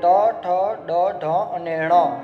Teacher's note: ણ છે એ મૂર્ધા અને નાકની મદદથી બોલાય છે.